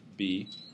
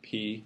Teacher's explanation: with B you start moving your vocal cords before you really release it with P you have sort of that aspiration going on and then you start moving your vocal cords so it's the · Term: voice onset time